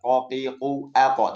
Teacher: Dhamah tetap tebal, kasrah tetap tebal, sukun tetap tebal, qo qi, qu aq tetap tebal. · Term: qof, isti'la